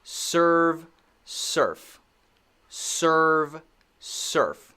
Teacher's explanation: Okay, the difference is the end. When I say v, I'm using my voice. When I say f, I'm not using my voice.